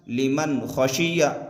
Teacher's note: लिमन खशिया, मीम नून ज़बर मन, यहाँ पर इजहार होगा इसलिए कि नून साकिन के बाद हरूफ हल्की के 6 हरफों में से खा आ रहा है, लिहाजा नून साकिन की आवाज़ को जाहिर करके बिला गुन्ना के जल्द पढ़ेंगे